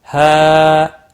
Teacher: ہا یہاں پر مد منفصل ہے، تین الف کے برابر کھینچ کر پڑھیں گے